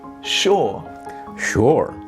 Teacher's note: In British English, it's more typical to have a flat, monosyllabic sound where the r is either unvoiced or very soft, like the r in the word, or.